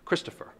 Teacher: That's a dactyl. Three syllables, the first syllable is emphasized, followed by two unstressed syllables.